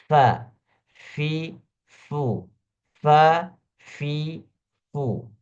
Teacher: bagian dalam tapi kalau bacaan yang benar adalah fa fa maka gigi bagian atas itu gigi serinya langsung nempel atau bergesekan dengan perut bibir bagian bawah